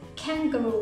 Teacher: Kang▁เขาจะ▁stress▁ตรงตัว▁Kang▁Kangaroo▁ต่อพยางค์ท้ายสองคำตรงนั้นจะไม่ค่อยออกเสียงหนักเท่าไหร่